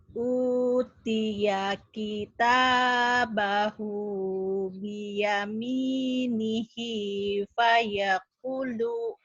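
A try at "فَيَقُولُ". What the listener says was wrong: Kunya panjang lagi. Ulang.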